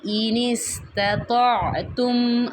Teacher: یہاں پہ یا کی جو کھڑی زبر ہے اسے کھینچ کے پڑھیں گے، نون مشدد آ رہا ہے، یہاں پہ غنہ کریں گے، اور نون ساکن کے بعد دیکھیں گے یہ سین ہے، یہ حروف حلقی میں سے نہیں ہے، تو یہاں پہ ہم اخفا کریں گے، یعنی کہ آواز کو نون کی ناک میں 1 سیکنڈ کے لیے چھپا کے پڑھیں گے